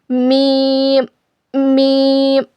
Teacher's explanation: दोनों होठों के सूखे हिस्से से मीम अदा होता है